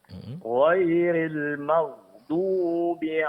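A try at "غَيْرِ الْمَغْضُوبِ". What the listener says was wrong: Namun ada sedikit pengucapan huruf gin sukun di sini. Suara jangan terputus dan jangan terlalu ditekan ya, Pak ya.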